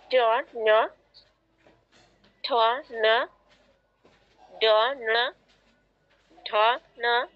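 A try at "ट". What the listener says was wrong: না, ন নয়, টা। টা টা বলতে জিহ্বাটা যেখানে টাচ করছেন একই জায়গায় নিয়ে টাচ করুন, তারপর সাউন্ড বের করুন না।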